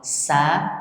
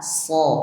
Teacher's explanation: bedanya sin itu disebut istifal atau tipis, sedangkan shad itu disebut istila'la atau tebal. Maka bunyinya kalau tebal harus mengangkat pangkal lidah ya.